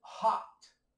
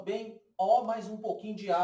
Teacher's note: Meio O, um pouquinho pro A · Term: som O aberto